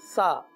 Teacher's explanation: یہ ہے کنارے، یہ اوپر کا دانت، اس کے جو اندر کا جو حصہ ہے اس طرح آپ محسوس کر رہے ہوں گے میری زبان کو دیکھ کر کہ زبان جو ہے اوپر کے دانتوں کی اندرونی کنارے پر لگ رہی ہے